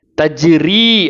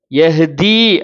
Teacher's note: இந்த வார்த்தையை தஜ்ரி அப்படின்னு இந்த ரீக்கு 2 கவுண்ட் கொடுக்குறோம்